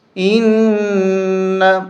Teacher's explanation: یہاں نون کے اوپر غنہ ہوگا، نون کے اوپر تشدید ہے۔